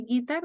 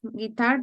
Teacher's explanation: We tend to say guitar, but it's guitar. The accent goes on the second syllable.